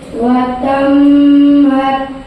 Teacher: ایک مرتبہ پیچھے والے حرف سے ملا کر دوسری مرتبہ خود اسے تشدید کی آواز میں ایک قسم کی سختی ہوتی ہے. میم کے اوپر تشدید ہے اس لیے میم مشدد کا غنہ ہوگا